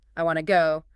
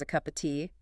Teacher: The word to is rarely pronounced with the full vowel sound. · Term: schwa sound